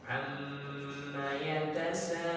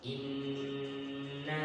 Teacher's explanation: Gunnah yang paling tinggi tingkatannya, yang paling sempurna adalah gunnahnya mim ataukah nun yang bertasydid. Ini wajibul gunnah, dibaca ditahan bendungannya 2 harakat